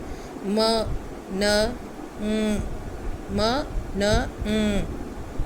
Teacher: The sounds in this group are made by lowering the वेलम and letting the air stream pass primarily through nasal cavity. आपका जो air flow है वो nasal cavity से निकलेगा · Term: नेज़ल साउंड्स